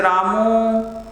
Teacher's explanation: जैसे आप किसी को बुलाते हैं बेटा तो लास्ट का जो स्वर छूटता है जैसे रामू तो म के बाद जो उ है वह लंबे समय तक है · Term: प्लुत